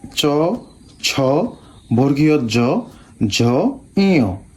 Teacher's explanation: এই সবগুলা বর্ণ উচ্চারিত হয় কোথা থেকে? তালু থেকে। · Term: তালব্য ধ্বনি